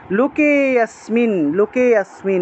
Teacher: কে থেকে একটা টান দেবেন, যেহেতু এখানে একটা লুপ্ত অ আছে তাহলে কে এর মধ্যে গিয়ে একটা টান দিতে হবে